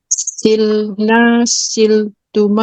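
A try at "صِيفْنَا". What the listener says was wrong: Kenapa lam? Kenapa sil?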